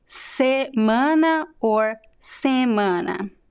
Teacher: nasal or not nasal both ways are used